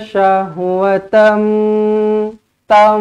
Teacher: jumpa dengan mim sakdu kena rapatkan bibir, dengungkan 2 harakat.